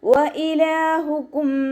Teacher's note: വാവ് ഉച്ചരിക്കുന്ന സമയത്ത് ചുണ്ടുകളെ വട്ടത്തിൽ പിടിക്കാൻ ശ്രദ്ധിക്കുക.